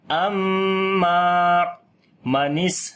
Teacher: سین کے اوپر صفت صفیر صفت ہمس کریں گے · میم کے اوپر شادہ غنہ کریں گے، لمبا بھی کریں گے، الف مدہ ہے